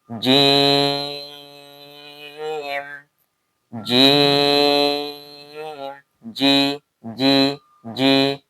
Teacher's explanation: জিবার মধ্যখান তার বরাবর উপর তালুর সঙ্গে লাগিয়ে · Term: জিম